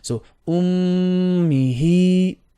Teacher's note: mim shadda, 2 beats of ghunna, and then we have a 2 beats on the ha with a standing kasra.